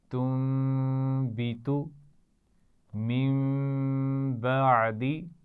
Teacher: نون ساکن یا تنوین کے بعد حرف با آ جائے تو ہم نون کی آواز کو میم سے بدل کر پڑھتے ہیں اور غنہ بھی کرتے ہیں.